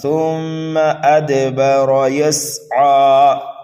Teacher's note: را کو پر کر کے پڑھیں گے، موٹا کر کے پڑھیں گے